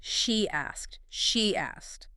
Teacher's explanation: The E in she is a strong smiley vowel. When it flows into asked, a Y bridges the gap. It becomes she asked.